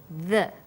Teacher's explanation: when you say the, your tongue is between your top and bottom teeth, like this, the.